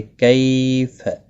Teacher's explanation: را زبر کی وجہ سے پر پڑھا جائے گا، ربی ارینی، را زیر کی وجہ سے باریک پڑھا جائے گا، نی یا مدہ ہے، ایک الف کے برابر کھینچ کر پڑھیں گے۔ کیف کئی یا لین ہے، تھوڑا نرمی کے ساتھ کھینچ کر ادا کریں گے